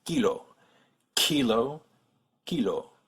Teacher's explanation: the French ones don't use a big puff of air